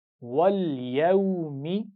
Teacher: لام پر قلقلہ نہیں کرنا، اس کا خیال رکھیے